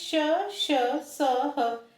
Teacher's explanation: से बाहर निकलती है तो ये उष्म व्यंजन कहलाते हैं और इन्ह इन्हें बोलते समय वायु को संघर्ष करना पड़ता है इसलिए ये संघर्षी व्यंजन भी कहलाते हैं